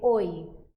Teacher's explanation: Observe que o o é mais forte do que o i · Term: semivogais, semivogal